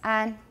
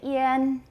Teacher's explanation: Can you feel your tongue being a bit higher for yin?